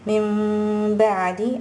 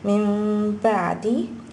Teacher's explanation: an iqlaab changes over to an ikhfa shafawi, which is that you would use the meme to blend in with the ba. Min ba'di, and you're blending it in with the ghunna.